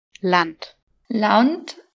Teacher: Devant un N, A devient plutôt AU.